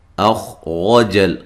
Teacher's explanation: خا کو موٹا ادا کرنا ہے لیکن ہلانا نہیں ہے، حمزہ کو تحقیق سے پڑھنا ہے، اور را کو موٹا ادا کرنا ہے